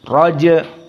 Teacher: JIM dalam keadaan sukun Qalqalah asugro karena dia di tengah